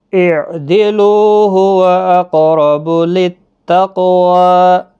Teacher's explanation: قاف ساکن پر قلقلہ ہوگا، موٹا بھی پڑھا جائے گا، را بھی زبر کی وجہ سے پر پڑھا جائے گا۔